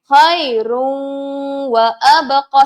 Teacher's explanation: Seolah-olah kita baca waw tu ada sabdu. Begitu. Tapi jangan lupa bersama dengan dengung.